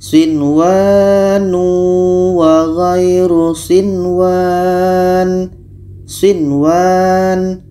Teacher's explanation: ada nun mati bertemu wa maka ini dibaca jelas Nun jelas wau jelas sama dengan ini Nun jelas wau jelas dan dibaca tidak dengung · Dibaca jelas dan tidak dengung. Nun jelas, waw jelas. Dan di sini tidak boleh didengungkan. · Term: izhar wajib